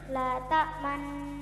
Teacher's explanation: Bacaan ismam artinya bibir mencucu atau mencong di tengah-tengah dengung sebagai isyarat bunyi dhammah